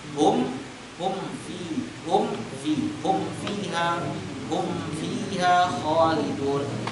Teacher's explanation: bacalah hum dulu, mim tutup, baru fa dengan gigi dengan bibir bawah.